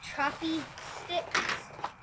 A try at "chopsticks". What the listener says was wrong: chopsticks, not choppy.